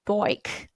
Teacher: So apparently we say like boik with a like an OI sort of diphthong sound, being two different sounds in the one vowel